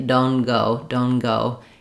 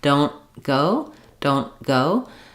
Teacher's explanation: What I do here instead is I use what's called an unreleased or stopped T, don't go, don't go. It means I'm stopping my N sound short, blocking the air like I would for a T, but rather than releasing don't releasing the air for the T, I just release right into the G